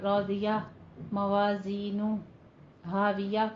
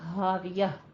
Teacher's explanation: ہا کی آواز آپ نے لازمی نکالنی ہے، اقصے حلق سے، جیسے اللہ ہو کی جو آواز ہوتی ہے یہ آپ نے تمام آیات کے آخر میں لازمی نکالنی ہے، ٹھیک ہے، تاکہ ہا کی ادائیگی ہو سکے۔